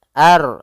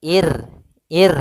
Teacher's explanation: ada huruf ro yang sukun didahului dengan kasrah maka ini kita namakan dengan ro tarqi ro yang tipis dalam pelafalannya